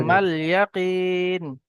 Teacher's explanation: ইয়া সাকিনের ডান দিকে জের এসছে, ইয়া মাদ্দাকে একালি পরিমাণ টান দিয়ে পড়তে হবে।